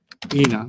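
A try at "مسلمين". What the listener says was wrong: leave the M. M is part of the Muslim.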